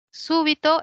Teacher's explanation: Súbito es una palabra esdrújula. Quiere decir que la mayor fuerza de voz está en la antepenúltima.